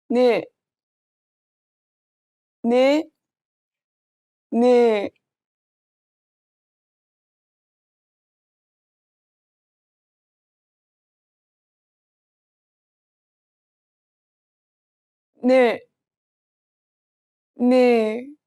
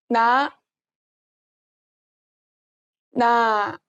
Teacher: The shape of this character shows where your tongue needs to be placed. Make sure the tip of your tongue touches the lower part of your top teeth when reading this character. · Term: nasal sounds